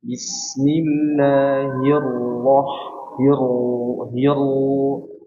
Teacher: Ra-nya yang pertama tadi kurang ada tasydidnya, ditahan biar sedikit mengalir.